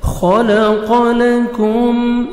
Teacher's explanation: خا کو موٹا کر کے پڑھیں گے. قاف کو موٹا کر کے پڑھیں گے.